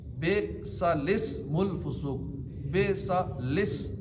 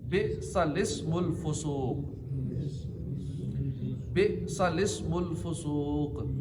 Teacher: लाम से पहला अलिफ और बाद वाला अलिफ, दोनों अलिफ ना पढ़ें, बल्कि लाम को ज़ेर देकर पढ़ें। बेसालिस्मुल फुसूक, बेसालिस, लाम को ज़ेर दे के पढ़ें।